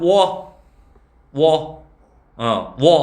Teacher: 워 하면은 역시 앞에 우는 날 듯 말 듯 하지. 그게 반모음 우야. 그래서 국어에서 반모음은 세 가지.